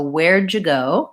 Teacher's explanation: So when I say where do you go, that does have a similar sound. So where'd you go kind of has more of a j, where'd you go, versus where do you go, where do.